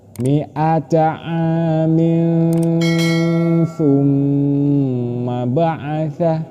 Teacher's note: Miatain terus tanwin bertemu dengan huruf tsa. Maka ini disebut ikhfa. Cara membacanya harus samar dengan berdengung.